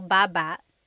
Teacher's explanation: Emphasis is on the first syllable.